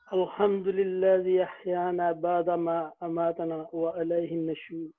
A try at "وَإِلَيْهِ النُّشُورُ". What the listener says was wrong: وَإِلَيْهِ النُّشُورُ. یہ دیکھیں اس کو وَعَلَيْهِ النُّشُورُ نہیں پڑھنا، اس سے معنی تبدیل ہو جائے گا. وَإِلَيْهِ کا معنی ہوتا ہے طرف، عَلَى کا معنی ہوتا ہے پر، تو وَإِلَيْهِ النُّشُورُ.